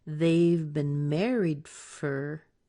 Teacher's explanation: And for is usually reduced, so we'll mark this as fur.